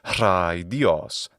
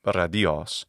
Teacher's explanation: the ro needs to be a voiceless initial sound